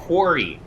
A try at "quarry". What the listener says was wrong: you're putting too much emphasis on the sea you got to put more emphasis on the U when you say quy